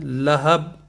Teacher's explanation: اگر لہب پڑھیں گے تو اس میں قلقلہ ہوگا با میں